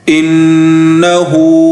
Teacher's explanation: نون زیر ان نون زبرنا ان ہا الٹا پیش ہو انہو نون پر غنہ کیا جائے گا کیونکہ نون مشدد ہیں